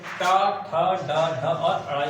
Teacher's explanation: दोस्तों मूर्धन्य इसमें हमारा मूर्धा का यूज होता है इनको उच्चारण करने में